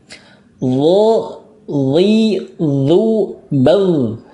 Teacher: Lo, li, zu, bal, ditebalkan lo-nya ya, ditebalkan dan ada rokhwahnya.